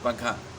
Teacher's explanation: آواز چھپ جاتی ہے نون کی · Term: اخفاء